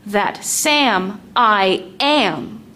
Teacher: The word am is still strong in this second foot. That means the word I is actually a weak one.